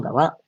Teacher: the feminine wa, the intonation goes up